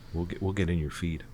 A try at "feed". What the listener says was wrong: Yeah, I know what you said, but you said feet. We'll get in your feet. That's what you said.